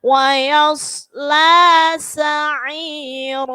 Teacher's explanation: sod itu huruf tebal, jadi wayas, tebalkan.